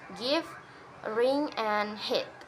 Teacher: pronounced with the tongue slightly lower or mid High position